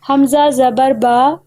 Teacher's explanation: با کا مخرج ادا کرتے ہماری آواز دونوں ہونٹوں کو ملانے پر رکی ہے، تو سمجھ لیجئے کہ با کے مخرج کے نکلنے کی جگہ دونوں ہونٹ ہیں، اور اب کو اب نہیں پڑھیں گے کیونکہ یہ حروف قلقلہ میں سے ہے، اس لیے ادا کرتے تھوڑی سی آواز ہلتی ہے، اب نہیں اب۔